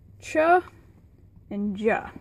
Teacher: stops with a fricative release the stops are a class of sounds where air is completely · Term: affricates